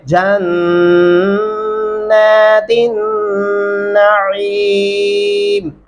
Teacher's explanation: فی جنات، جیم کو نون کے ساتھ ملائیں گے اور نون کے اوپر کھڑی زبر ہے، پھر وہ لمبا بھی ہو جائے گا نون، اور تا کو نون کے ساتھ ملائیں گے کیونکہ یہ جو درمیان میں الف اور لام ہے دونوں چھوڑ دیے جائیں گے۔ نون کے اوپر جزم آنے کی وجہ سے تا کو ہم نے نون کے ساتھ ملانا ہے۔ جنات النعیم، عین گلے سے ادا ہونا چاہیے۔